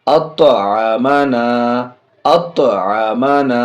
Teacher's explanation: طا حرف قلقلہ میں سے یہاں بھی آواز لوٹے گی